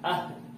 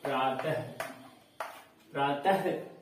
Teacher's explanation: विसर्ग से जुड़े हुए शब्द को पढ़ेंगे, जिसका उच्चारण जो है हम क्या करते हैं? आधा ह के रूप में करते हैं।